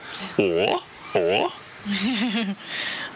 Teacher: Vous voyez qu'à la fin du O, il y a un O. Il y a comme un W après.